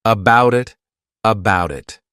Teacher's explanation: Here, this is called linking, where we link these two sounds together. So, about it, I'll actually use a soft D sound, and you'll hear that sound on both sides of the word, and I'll say it as one, about it, about it.